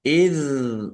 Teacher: sukun bukan qalqalah. Jangan dipantulkan.